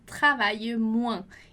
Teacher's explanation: Você já viu lá comigo que o S em final de palavra a gente não pronuncia